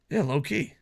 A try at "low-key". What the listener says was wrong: You're spacing it out. You're saying low-key.